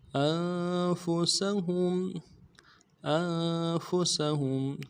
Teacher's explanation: سین کی سیٹی باریک ہوگی، باریک ادا کریں گے، ہا کو میم کے سامنے لانا، میم ساکن غنہ کریں گے.